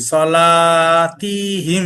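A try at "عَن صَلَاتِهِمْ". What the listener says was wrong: হ্যাঁ, সলাতিহিম এখানে একটু টান হয়ে গেছে। সলাতিহিম।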